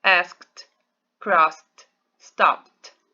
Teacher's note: É só a última letrinha, o último som, tá? Quando ele é unvoiced, ele vai ter som de T, o ED.